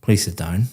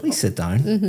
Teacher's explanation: For example, when you came in here today and I said, "Please sit down." Very flat intonation going down.